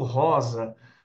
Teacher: o S entre duas vogais tem som de Z